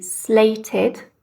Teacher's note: Again part of the same syllable but it would be slated because we've got that t so that's the ID on the end